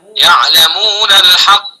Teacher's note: अब अगर हम वस्ल करेंगे यालमून के नून को लाम के अंदर मिला देंगे